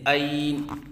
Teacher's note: بعض بچے عین کی ادائیگی کے وقت شروع میں حمزہ پڑھتے ہیں، یہ غلط ہے